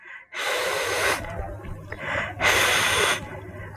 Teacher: অর্থাৎ মাখরাজ আদায় করার সময় আমরা জিহ্বার আগা সামনের উপরের দুই দাঁতের আগার সাথে এরকম ভাবে লাগানোর চেষ্টা করব, সামান্য ফাঁক থাকবে, অর্থাৎ লাগে লাগে লাগে না, এরকম ভাবে খুবই কাছাকাছি নিয়ে লাগানোর মতো করে রেখে দেব। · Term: হামস